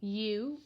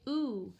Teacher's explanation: the long vowel now here's where the letter U gets tricky the long vowel can say two different things right it can say you like the letter name you or it can say ooh